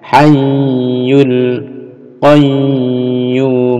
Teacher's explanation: Ini ada tasdid, hayyu ditekan tahan ya. Hayyul qayyum, ini juga tasdid, qayyum ada di bunyinya hayyul qayyum.